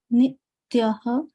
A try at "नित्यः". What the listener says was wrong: not nityaḥ. It is nityaḥ. That there is only one. Yeah. There's only one ta, right? Nityaḥ. So I'm breaking this word into two pieces, right? Nityaḥ, like that.